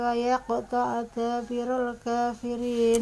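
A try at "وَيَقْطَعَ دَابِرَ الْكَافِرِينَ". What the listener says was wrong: Ya, di sini perhatikan di huruf ain ya, wa yaqta'a. Ya, tadi ainnya kurang sempurna jadi masih seperti hamzah. Seperti wa yaqta'a. Harusnya kan ain, wa yaqta'a.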